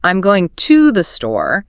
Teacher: If I say, "I'm going to the store," I'm emphasizing the word to, · I'm emphasizing the word to, which suggests, I don't know, maybe there was a debate about whether I was going from the store or near the store.